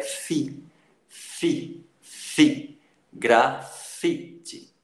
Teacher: Ele não tem acento, mas a gente vê que a sílaba tônica é fi, fi, fi.